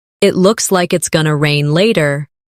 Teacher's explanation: It looks like it's going to rain later. In connected speech, going to becomes gonna.